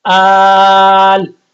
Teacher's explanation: اب یہاں پہ 2 چیزیں لام ساکن بھی ہے اور اس کے بعد مد بھی ہے تو اب یہاں پہ مد اس مد کو تھوڑا زیادہ لمبا کرنا ہے. حمزہ لام مد کھڑی زبر آل.